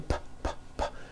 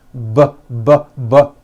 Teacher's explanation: the P sound has no voicing and the B sound, b, b, does have voicing. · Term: paired consonants